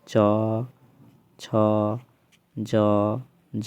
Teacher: तालु किसका उच्चारण स्थान होता है च वर्ण का